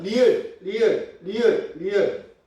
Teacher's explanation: 코에서 소리가 안 나요. 양 옆으로 공기가 흘러서 나온다라고 해서 이거는 유음이라고 설명을 하죠.